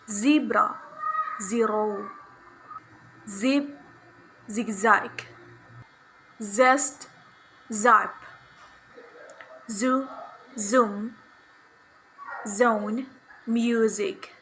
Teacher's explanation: voiced alveolar fricative sound za, zebra, zero, zip, zigzag, zest, zap, zoo, zoom, zone, music.